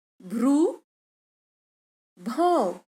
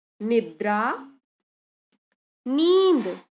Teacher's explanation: निद्रा, नींद, यहाँ भी बिना नासिक ध्वनि के अनुनासिकीकरण हो रहा है